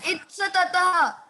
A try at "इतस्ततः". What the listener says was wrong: इतस्ततः। इस ततः नहीं है, इतस्ततः। इतस्ततः।